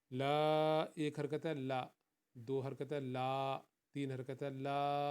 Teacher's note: لا، اس کو 3 حرکت کے برابر یا 4 حرکت کے برابر آپ ادا کریں گے۔ لا، 1 حرکت ہے لا، 2 حرکت ہے لا، 3 حرکت ہے لا، اس طرح لمبا کرتے جائیں گے۔ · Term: مد